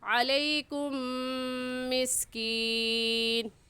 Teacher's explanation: میم ساکن کے بعد میم آ گیا ہے، اس وجہ سے اس میم ساکن پر ہم غنہ کریں گے۔